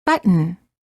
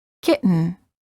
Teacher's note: hold the t as in but and then add an N without releasing the tongue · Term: held T